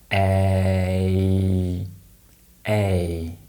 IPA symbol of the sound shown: eɪ